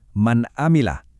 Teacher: Sama sekali enggak ada sisa dengung di hidung kan? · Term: izhar